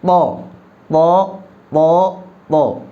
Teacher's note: jadi huruf to-nya menempelkan ujung lidah, ujung punggung lidah ke gigi pangkal gigi seri atas